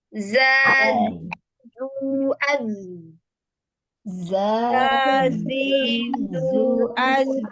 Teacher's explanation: membentur gigi seri depan ya. Jadi deras suaranya itu di gigi seri depan. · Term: sofir